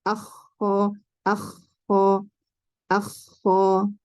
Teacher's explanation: Kalau Mesir dan Syam ada ngorok tapi tidak berlebihan.